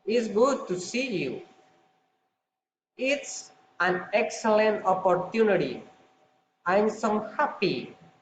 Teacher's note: exclamatory sentences falling intonation